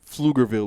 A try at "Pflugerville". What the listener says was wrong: Pflugerville, there's a P there.